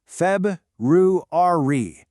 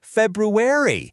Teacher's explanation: It's that first R that so many of us accidentally skip over.